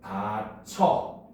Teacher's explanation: 반모음 이의 영향을 받아가지고 구개음화가 일어나서 다쳐. 이렇게 소리가 나는 거죠.